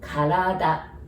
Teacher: we don't have R sound, so we pronounce it like L